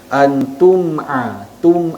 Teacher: ta kemudian tuma'a mim mati bertemu dengan huruf Ain Idhar Syafawi huruf mim itu dibaca matinya dengan jelas kemudian terus menyebut huruf pada baris yang seterusnya